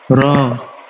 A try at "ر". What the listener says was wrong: را کو موٹا پڑھنا ہے. تھوڑا سا آپ زبان کو کرو دے کے پڑھو گے نا، زبان کو تھوڑا سا کرو دے کے پڑھو گے. را اپنے منہ کے اندر ہی زبان کو تھوڑا سا کرو کرو گے نا تو پھر را موٹا